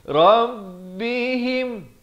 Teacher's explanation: izhar syafawi, jangan panjang. Sempurna mim mati itu terus masuk.